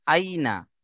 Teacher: ইয়া সাকিন, ডান দিকে জেবার ইয়ালিন, হামজা ইয়া জেবার আই, নুন জেবার না, আই না। ইয়া সাকিন, ডান দিকে জেবার ইয়ালিন, নরম আওয়াজে তাড়াতাড়ি পড়তে হবে। নুনের উপরে জেবার হারাকাত, হারাকাতের পড়া কি তাড়াতাড়ি পড়তে হবে, টান দেওয়া নিষেধ।